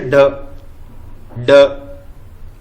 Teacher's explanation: जीभ की जो नोक है झटके के साथ नीचे गिरती है वो उक्षिप्त या फेंका हुआ कहलाता है